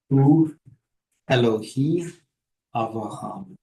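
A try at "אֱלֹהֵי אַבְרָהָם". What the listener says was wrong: Okay, all is good, but how about this tzirei right here? Elohei, that's right. Hu Elohei Abraham. We have the segol. Don't mind the patach, the reduced vowel here. Then we have the cholam. Lo he I. Elohei.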